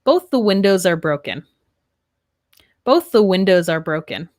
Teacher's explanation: here we have a similar consonant sound, the th and th, our th voiced and unvoiced. And here we would link the S and the A, windows are.